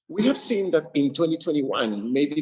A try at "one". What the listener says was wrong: Sounds like he's saying Juan like someone like a guy named Juan instead of one, right?